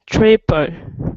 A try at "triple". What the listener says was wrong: Triple. And not tree, but tri.